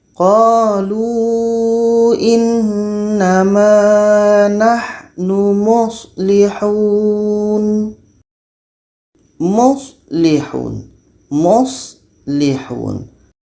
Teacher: Kita alirkan suara sedikit untuk ha dan sh. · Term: rakhawah